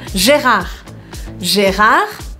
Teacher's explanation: A gente não pronuncia esse D. A gente nem fecha a boca, a gente deixa ela realmente aberta pra não correr o risco de falar o D que não se escuta.